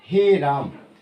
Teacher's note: ऐसी ध्वनियाँ जो ह्रस्व, दीर्घ से भी ज़्यादा समय का प्रयोग हो, उसे हम साथियों क्या बोलते हैं, पुलुप्त बोलते हैं